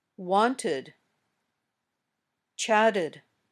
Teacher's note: It's important to remember that we're talking about the last sound, not the last letter in the word. If the last sound in the verb is t or d, the ending sounds like ud. We add an extra syllable to the word.